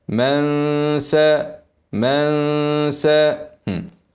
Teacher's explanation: الغنه هتبقى عند مخرج السين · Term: اخفاء